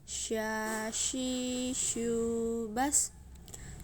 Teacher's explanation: dengan menyentuhkan tengah lidah dengan langit-langit, mengalir udaranya dan nafasnya.